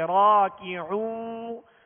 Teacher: تو عین کو وسط حلق سے درمیانے حلق سے ادا کرنا ہے، اور آگے وہ مدہ ہے ایک الف کی مقدار، اسے کھینچیں گے لیکن ہونٹوں کو گول رکھیں گے